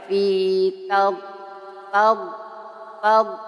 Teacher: huruf d keluarnya dari sisi lidah kanan atau kiri yang bertemu dengan Gigi Graham sebelah atas